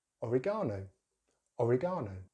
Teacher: in British English, oregano, oregano, with stress on that gar, that third syllable